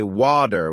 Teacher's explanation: In American English, people might say water with a D sound, while in British English it's often watu with a T sound.